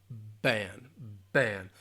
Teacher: The B sound, b, b, b, v, b. So we're talking about voice or voiceless, b. So it is a voice sound